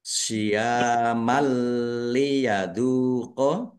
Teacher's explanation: Mad thobi'i juga dibaca panjang dua harakat. Fathah tanwin bertemu dengan huruf lam. Bacaan idgham bila ghunah masuk dengan tidak mendengung.